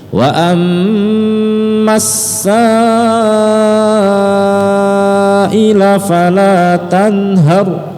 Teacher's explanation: Sa-nya panjang 5 harakat, mad wajib muttasil.